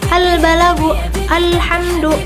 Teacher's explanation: Kalau al-qamariyah itu biasanya alnya itu kebaca dibanding dari al-syamsiyah.